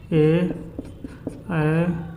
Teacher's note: यानी कि कंठ और तालु से इसका उच्चारण स्थान होगा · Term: कंठतालु